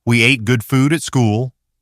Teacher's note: In ooh, the forward rounding of the lips needs to hold. Don't let the sound spread out. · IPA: /u/